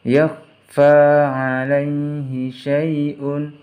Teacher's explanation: Yakhfa alaihi syai'un, di sini ada harokat dhammah, tanwin bertemu dengan huruf fa, maka harus dibaca samar